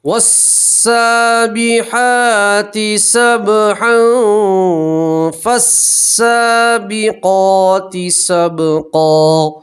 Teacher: فالسابقات سبقا، اگر اس والے آیت کو اور اس والی آیت کو ملا کر پڑھیں گے تو تنوین کا اخفا کریں گے، اخفا کا مطلب ہوتا ہے چھپانا، تو تنوین کی آواز کو آپ ناک میں چھپا کر گنہ کے ساتھ پڑھیں گے۔